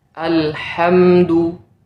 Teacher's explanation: huruf ha di sini adalah huruf ha yang keluar dari tengah tenggorokan bukan dari pangkal tenggorokan